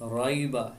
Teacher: یہاں پر یا لین ہے، اس کو لمبا نہیں کریں گے۔